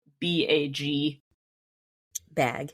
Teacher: you'll notice that you almost extend the vowel sound a little bit. So it's not like another full syllable, but it's elongated a little bit.